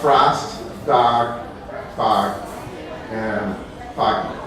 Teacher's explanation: lower north tends to take all those aw sounds and make them ah sounds